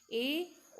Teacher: अर्ध संवृत जिन स्वरों के उच्चारण में मुख द्वार आधा बंद रहता है। मतलब जब हम इन स्वरों का उच्चारण करते हैं तो हमारा जो मुख है वो आधा बंद रहता है। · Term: अर्ध संवृत स्वर